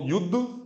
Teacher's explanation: द लिखा पूरा है लेकिन प्रोनाउंसिएशन में उसमें कोई स्वर नहीं है